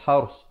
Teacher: Ra di sini jadi tebal